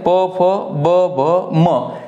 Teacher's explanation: प फ ब भ म हे ओष्ट आहेत याचं स्थान आहे ओष्ठाच्या ठिकाणी